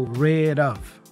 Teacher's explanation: the D for rid connects with the vowel O for the preposition of, and it has that flap sound, da da da da.